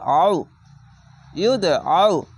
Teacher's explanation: আইনটিকে আউ মোটা করে গলা চিপে পড়বেন।